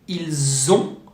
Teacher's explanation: French put a Z sound after il to do what we call a liaison.